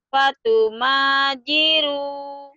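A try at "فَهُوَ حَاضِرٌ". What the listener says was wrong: Bukan ma itu ha. Fatuhajiru.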